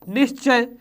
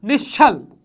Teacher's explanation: विसर्ग का तालव्य स में परिवर्तन